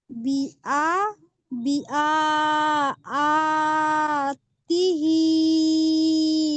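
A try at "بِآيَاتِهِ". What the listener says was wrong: হ্যাঁ, ও বি আ, আ হবে না, বি আ, ইয়া, ইয়া খাওয়া তো রিয়া হবে। এটা হামজা খাওয়া যাবার আ হয়েছে, এটা ইয়া খাওয়া যাবার রিয়া হবে, তাহলে আ ইয়া, বি আ ইয়াতিহি।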